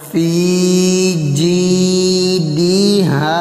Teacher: جیم کے ساتھ پھر آگے یا مدہ، ان دونوں کو کھینچیں گے ایک الف کے برابر۔ فی جیدہا، ہاں کے ساتھ بھی الف مدہ، ہاں کو بھی ایک الف کے برابر۔